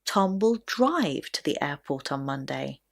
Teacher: if the question that comes before is how will Tom get to the airport then the stress will naturally be on the word drive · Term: sentence stress